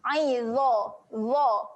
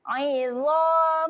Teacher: Huruf dha adalah huruf yang tebal. Kena muncungkan mulut.